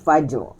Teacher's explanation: Sebelumnya baris di atas, maka bunyi fajr, tebal.